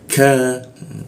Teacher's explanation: huruf ku di siku tenggorokan, lidahnya kita turunkan sehingga membaca k-nya itu ada hembusan udaranya.